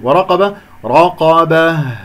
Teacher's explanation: أقف على هاء ساكنة إذا يجري فيها الصوت والنفس من منطقة أقصى الحلق